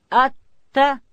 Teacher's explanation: تا ادا کیږي د ژبې سر به د لوړې زامې د مخ د دوو غاښو و بیخو ته وروړو